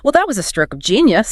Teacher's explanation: >> Right, because if an incompetent colleague accidentally deletes a server holding a year's worth of financial data, I don't use the bouncy, high-pitched banter. I compress my vocal range, I hollow out the emotion, and I say with a flat, quiet intensity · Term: deadpan delivery